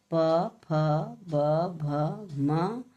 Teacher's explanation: इसका जो है उच्चारण स्थान ओष्ठ है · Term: प वर्ग